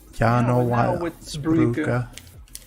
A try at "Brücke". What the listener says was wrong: Brücke. You gotta pronounce that umlaut. Brücke.